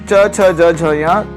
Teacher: क वर्ग, जैसे क ख ग घ ङ जो कंठ से बोले जाते हैं। च वर्ग, च छ ज झ ञ तालु से बोले जाते हैं।